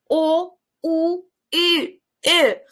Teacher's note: O, Ü, U, bir de seslerini telaffuz ettiğim zaman ağız şeklim yuvarlak şekilde dönüşmüş. Yani O, U, Ü, harflarini telaffuz qilgan paytim ağız şeklim dumaloq shaklga aylanadi